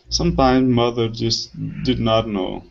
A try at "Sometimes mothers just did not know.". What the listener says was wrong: Okay, much better with the TH sound. Good.